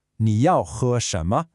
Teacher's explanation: Notice that sharp falling fourth tone on yao and the high flat first tone on he.